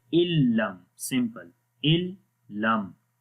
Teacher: So how to read illam, like the noon we do not read, we do not make a nasal sound, like we do not make ghunnah, so we only connect hamza with the lam, illam, okay, without ghunnah.